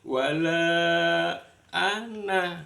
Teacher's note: yang berarti saya itu wajib dibaca pendek. Ini contohnya seperti wala ana lah itu enggak boleh ana, enggak boleh ana. · Lah, yang berarti saya itu wajib dibaca pendek.